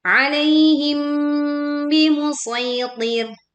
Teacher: Alaihim bimusaytir. Nah, ini mim sukun bertemu ba. Ini melebur ya, disertai dengung, maka tidak tergesa-gesa